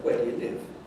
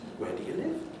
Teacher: Notice that you can still do rises on WH questions, particularly echo questions. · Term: rising tone